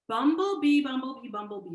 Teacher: the ba that's a bilabial voiced consonant and it's easy to allow the closure to cause us to